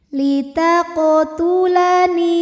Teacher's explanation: Kemudian ada hukum qalqalah sugra karena ada huruf qalqalah yang sukunnya ini sukun asli dan ada di tengah bacaan. Maka kita baca qafnya ini dengan pantulan yang kecil.